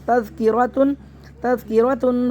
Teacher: رو کو موٹا پڑھنا ہے